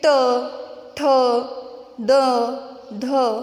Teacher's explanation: अब इस वर्ग में आने वाले जो व्यंजन हैं उनका उच्चारण करते समय हमारी जीभ बीच में ही घूमती रहती है, मुंह के बीच में घूमती रहती है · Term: मूर्धा व्यंजन